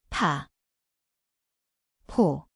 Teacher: ito ay isang aspirated na may malakas na bugso ng hangin.